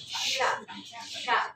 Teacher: Sya itu di tengah lidah dengan langit-langit ya. Sya sya di tengah lidah dengan langit-langit ya.